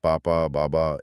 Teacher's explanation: ब बोलने के लिए बस दोनों होठों को आपस में टकराना है